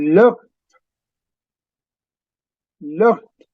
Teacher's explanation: that D is not exactly a heavy D. It's a softer D. Sounds almost like a T.